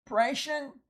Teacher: It was an N that changed to an M in front of the bilabial P. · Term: chameleon prefixes